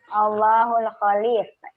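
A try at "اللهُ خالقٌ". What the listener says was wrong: Tidak ada alif lam di situ, Bu. Coba.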